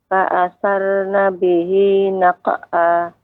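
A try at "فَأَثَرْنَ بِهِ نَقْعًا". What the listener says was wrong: Ya, huruf Ra harus lebih ditebahkan lagi, Ibu. Fa'atharna. Kemudian huruf Qaf ketika dia qalqalah juga tebal. Naq'a.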